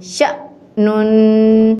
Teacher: شین زبر حمزہ شا، نون دو پیش نون، شأنن۔ یہ حمزہ ساکن ہے، اس کو ہم جھٹکے کے ساتھ ادا کریں گے۔